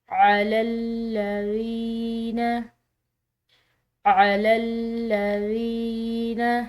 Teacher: یہاں پر یا ساکن یا مدہ کہلائے گی کیونکہ اس کا پچھلا حرف زیر کے ساتھ ہے، تو اس کی وجہ سے ہم نے اس کو لمبا ادا کیا ہے